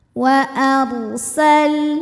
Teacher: huruf ro sukun dibunyikan secara tafkhim karena harakat huruf sebelumnya fathah makanya ditebalkan